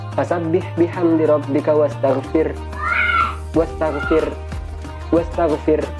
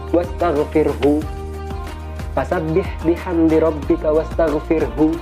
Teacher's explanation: Kalau diwakafkan maka ha-nya harus terdengar.